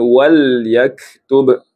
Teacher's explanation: Di sini tuan puan perhatikan ah perkataan walaktub. Wal huruf lam dia ada sifat tawas, sifat pertengahan di antara syiddah dengan rakhawah · Wal huruf lam, dia ada sifat tawassut, sifat pertengahan di antara syiddah dengan rokhawah. Tawassut itu maksudnya dia tidak mengalir sangat suara dan tidak tertahan suara sangat.